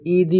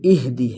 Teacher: اور اس اگلی آیت میں جو ہم سے غلطیاں ہوتی ہیں، پہلی غلطی ہم اس لفظ پر کرتے ہیں کہ ہم اس کو ایدی پڑھتے ہیں، یہ ایدی نہیں، یہ اہدی ہے۔ یہاں پر ہا کو واضح کرنا ہے اور ساکن ہے تو حمزہ اور ہا کو ملا کر پڑھیں گے، اہدی اس طرح پڑھیں گے۔